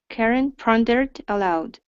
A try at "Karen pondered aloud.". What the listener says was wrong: There you go, good.